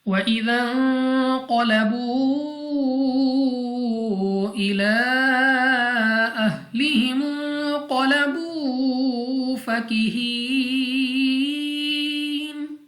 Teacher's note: نون ساکن کے بعد قاف حروف اخفا میں سے غنہ کر کے پڑھیں گے